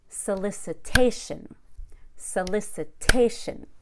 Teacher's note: stress where you stress approximately every other syllable solicitation solicitation so I stress not only the a but also the LIC gets secondary stress it gets the second most amount of stress but that s